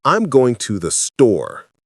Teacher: Voice goes down on store. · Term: statements go down